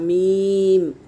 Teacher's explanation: मीम दोनों सूखे होठों से अदा होगा